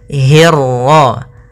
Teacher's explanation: hi-nya tipis, ketemu ro-nya yang tebal. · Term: ro tafkhim